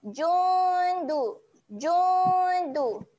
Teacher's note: Jun tu waktu kita dengung tu lidah kita dah get ready nak naik atas pergi makhraj huruf dal. Makhraj huruf dal belakang hujung apa hujung lidah berjumpa belakang gigi atas. Okay. Jadi waktu kita nak dengung kat sini, lidah kita dah sedia nak naik atas.